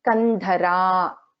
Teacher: Again, after na there is this dha is a Mahaprana.